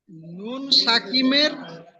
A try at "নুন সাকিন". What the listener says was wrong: দেখেন ভাই, প্রথম বলেন নুন সাকিম না সাকিন।